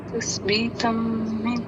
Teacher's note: ہم نون کو پروناؤنس وہاں پر نہیں کریں گے، نون کو اگلے حرف میں مرج کر دیں گے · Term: ادغام